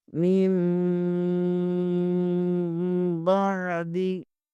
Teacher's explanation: اقلاب: نون ساکن یا تنوین کے بعد حرف با آ جائے تو اقلاب ہوگا، یعنی نون ساکن اور تنوین کو میم سے بدل کر اخفا کریں گے، یعنی غنہ کر کے پڑھیں گے